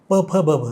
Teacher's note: प फ ब भ हे ओष्ठ उच्चार आहेत, आपण ओठांचा वापर करतो.